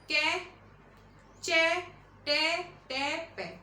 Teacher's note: series wise भी आप ध्यान रखिए, कंठ, तालव्य, मूर्धव्य, दंत और ओष्ठ